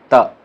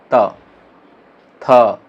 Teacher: दांत टच करता है, त। तो जीभ किसको टच करता है? दांत को